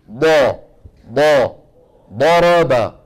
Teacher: دال مفخمة، ما حتخرج ضاد أبدا، طالما أنه يعتمد ويتكئ على المنطقة الأمامية. الاعتماد والاتكاء والضغط يكون فين؟ في الحافتين اليمنى واليسرى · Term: الضاد